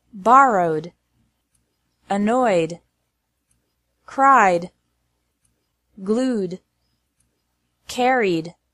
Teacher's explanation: e d is pronounced like d after verbs ending in a vowel sound